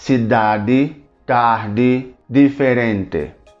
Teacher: não pronuncia o ti e o di dessa maneira tão aberta e tão forte